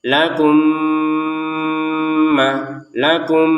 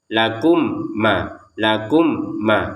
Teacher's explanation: Mim sukun bertemu mim. Masukkan mim yang pertama kepada mim yang kedua disertai dengungan.